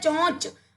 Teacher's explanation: नाक और मुंह से ध्वनि निकल रही है